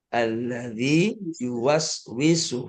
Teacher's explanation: panjangin dua harakat dulu. Jangan buru-buru ke ya. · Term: Mad tamkin